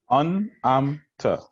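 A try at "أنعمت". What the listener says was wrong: So let's try to put more emphasis on the sound. So amta. From the throat.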